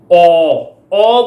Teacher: ਔ ਬੋਲਣ ਲੱਗਿਆਂ ਵੀ ਜੀਭ ਦਾ ਜਿਹੜਾ ਪਿਛਲਾ ਹਿੱਸਾ ਆ ਉਹ ਉਤਾਂਹ ਚੱਕਿਆ ਜਾਂਦਾ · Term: ਪਿਛਲੇ ਸਵਰ